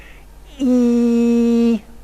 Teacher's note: there's a vowel that involves the highest possible tongue position in the mouth and the most front quality